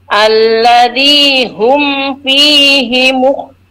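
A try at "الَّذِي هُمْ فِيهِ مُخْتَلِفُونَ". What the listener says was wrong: Huruf za-nya dikit lagi, huruf za kurang nempel. Bukannya sekedar nempel ya, tapi menekan ujung gigi seri. Allazi, zi tidak cukup. Allazi, zi dengan zi ya, zi.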